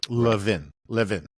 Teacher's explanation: the way my family pronounces it is Levin. The second syllable is stressed.